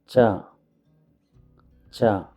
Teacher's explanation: this is the aspirated cha sound used to write Sanskrit words